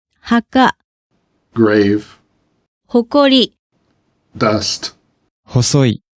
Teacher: ha and ho are often unvoiced when followed by a voiceless consonant plus the same vowel